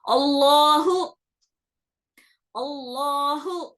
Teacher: زبان کی جڑ بولتے, وہ اوپر والے حصے کو آپ کو ہلکا سا اٹھانا پڑتا, تو جا کے لام موٹا ہوتا